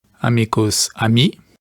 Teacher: It looks like in French that the k sound really dropped off there, but in other Romance languages it sort of stay, like amigo in Spanish and Portuguese.